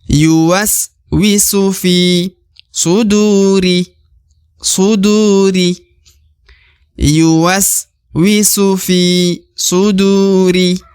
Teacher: du dibaca 2 harokat karena terdapat waw sukun atau waw mati di depan huruf du.